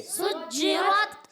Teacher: جیم کی ادائیگی چھ جیسی نہیں ہونی چاہیے · سین سیٹی کے ساتھ